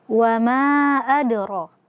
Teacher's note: huruf mad alif, setelahnya ada hamzah tapi tidak dalam satu kata, maka hukum tajwidnya adalah mad jaiz munfasil. Dibaca 4 sampai 5 harokat.